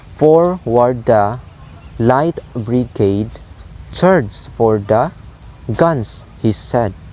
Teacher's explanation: So it's like high, low, low, high, low, low. So again, the pattern is high or stressed syllables followed by 2 unstressed syllables. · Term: dactyl, dactylic